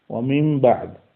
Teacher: নুন সাকিনকে বাদ দেওয়া হলো, এখন অবস্থা দাঁড়ালো কি, যে নুনটা মিম হয়ে গেল